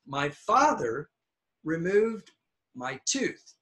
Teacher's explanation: So the two highest are the nouns, the father and the tooth.